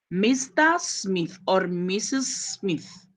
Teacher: Mr. Smith or Mrs. Smith, the second one takes the stress.